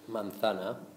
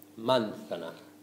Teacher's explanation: You can hear that the stress, manzana, comes on that second A.